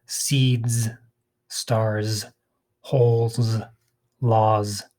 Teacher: it's like a s sound but it sounds like z after voiced sounds